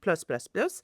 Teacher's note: En plus, when you have the en and the plus, please pronounce furthermore. So if it's more, you have to pronounce the S of plus